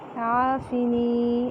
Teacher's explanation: عافنی عین وسط حلق سے ایک الف کے برابر لمبا کریں گے کیونکہ الف مدہ ہے. عافنی نون زیر یعنی یائے مدہ ایک الف کے برابر لمبا کریں گے